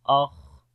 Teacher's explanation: خا کو موٹا بھی پڑھیں گے اور صفت ہمس یہاں پر بھی ہوتی ہے